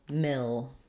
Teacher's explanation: ipa there look for the little line that tells you that mill is going to be held longer than the rest of the word and it's going to have a clear vowel · The word millimeter has four syllables, and the stress falls on the first syllable, mil.